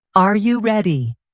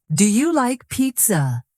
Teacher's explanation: when you ask a yes or no question like are you ready? Your voice rises at the end.